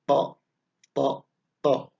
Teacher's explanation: seperti melafalkan t tapi agak ditekan dan agak tebal